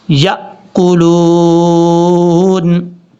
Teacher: یہ حمزہ ہے، جھٹکے کے ساتھ پڑھا جائے گا